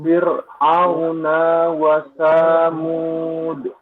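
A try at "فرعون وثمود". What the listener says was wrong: Nah, naknya pendek, wawunya seolah-olah nyambung ya. Coba.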